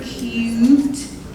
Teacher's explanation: There's a lot of the glide sometimes shoved in with that U sound